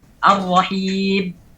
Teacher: Mim yang terlalu ditekan sehingga mirip dengan ba. Ar-rahim terlalu ditekan sehingga bisa menjadi huruf ba.